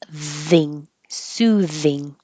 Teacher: this word looks like thing but it's voiced